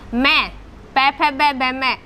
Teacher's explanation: ओष्ठ से बोले जाते हैं, यानी कि होठों का स्पर्श होता है, तो एक तो इसका उच्चारण स्थान ओष्ठ है और दूसरा नासिक है।